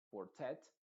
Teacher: no sabe dónde está el stress, en este caso está en tet